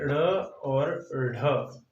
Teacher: उत्क्षिप्त यानी फेंकना, और उत्क्षिप्त व्यंजनों की बात करें तो ये ढ़ और ढ ये उत्क्षिप्त व्यंजनों के अंतर्गत आते हैं। इनके उच्चारण में ऐसा लगता है जैसे जीभ को उठाकर फेंका गया। ढ़ और ढ का उच्चारण करके देखिए, मतलब जीभ ऐसे मुंह से बाहर नहीं आ जाएगी, फेंकने का अर्थ तो वो नहीं है, लेकिन फिर भी मुंह के अंदर इसको जीभ को फेंका हुआ लगता है, फेंका हुआ महसूस होता है।